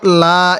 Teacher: আল্লাহ শব্দের লামের পূর্বে জবর থাকার কারণে আমি এই লামটিকে মোটা করে পড়ছি